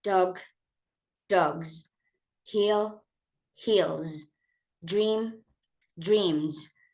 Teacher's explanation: Th, v, and vowel sound. All of these are voice. So again, we match them up with the voice z sound.